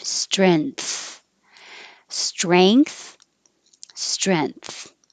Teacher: then the tongue has to come forward for the th or you can use the vowel e as in head strength and then you're putting your tongue in the front not high in the back for a regular in and then